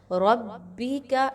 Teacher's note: را کو آپ پر پڑھیں گے کیونکہ را پر زبر ہے